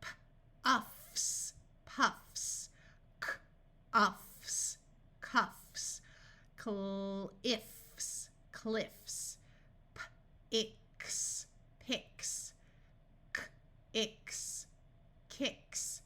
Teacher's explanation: If we have a word and we are trying to make it plural or change the conjugation by adding an S, we are going to use the unvoiced hissing sound after these letters, F, K, P, and T